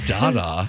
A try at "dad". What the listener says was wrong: That's turning dad into like 3 syllables. Dad. Dad.